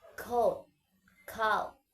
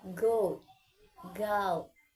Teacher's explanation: K is voiceless and G is voiced. Both are velar plosive product at the back of the mouth.